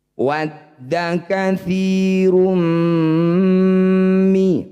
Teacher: Disebut bacaan idgham bighunah. Bunyi dumah tanwinnya masukkan pada huruf mim. Kemudian dengungkan dua harakat.